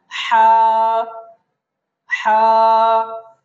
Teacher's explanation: বলবো জিম তারপরের হরফটা হলো হা হরফটা আমরা এক আলিফ টানবো হা হরফটা যখন আমরা বলবো তখন কণ্ঠনালীর মধ্যখান থেকে কণ্ঠনালীর মধ্যখান থেকে বলবো · হা হরফটা যখন আমরা বলবো তখন কণ্ঠনালীর মধ্যখান থেকে বলবো।